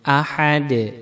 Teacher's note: Kemudian benar bacanya ahad. Dal mati qalqalah, dipantulkan suaranya